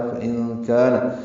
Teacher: نون ساکن کے بعد کاف آنے کی وجہ سے اخفا ہے۔ فَإِن كَانَ، کاف باریک الف مدہ دو حرکات لمبا ہے۔